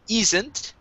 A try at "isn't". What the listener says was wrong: now here you're saying E, isn't. Instead of E, it's I, isn't.